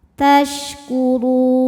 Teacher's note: Huruf ra dibunyikan secara tafkhim karena ra berbaris dhammah, maka dibaca ra-nya tebal.